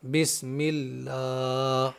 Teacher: اللہ کا لام ہے لیکن اس سے پہلے زیر ہے تو اس اللہ کے لام کو باریک کر کے پڑھیں گے